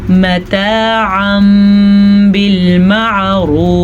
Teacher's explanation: यहाँ पे तजवीद का कायदा इक़लाब हो रहा है। नून साकिन या तनवीन के बाद हर्फ बा आ जाए तो नून साकिन या तनवीन को मीम में बदल देते हैं। जब हम मीम में बदलते हैं तो मीम ही पढ़ी जाती है, ना कि नून साकिन या तनवीन।